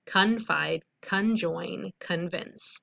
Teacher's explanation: a lot of times con words sounds like kun when you read it because of a schwa, which makes our vowel sounds sound a little different.